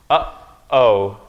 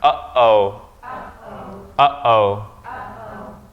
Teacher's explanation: there's a break there in the vowel sound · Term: glottal stop